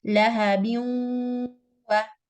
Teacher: half of the sound comes from my nose, nasal sound, and half of the sound comes from my mouth. By circling my lips, I am using makhraj of wow. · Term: incomplete idgham with ghunna